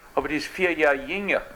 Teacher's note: the unrounding of the front rounded vowels in Texas German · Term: vowel unrounding